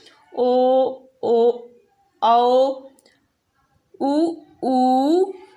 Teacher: जब हम ये उच्चारण कर रहे हैं तो हमारा जो ओठ है वो गोल हो रहा है, इसका ये मतलब है कि ये वृत्तमुखी स्वर हैं। · स्वरों के उच्चारण में ओठ वृत्तमुखी या गोलाकार होते हैं उसे हम वृत्तमुखी स्वर कहते हैं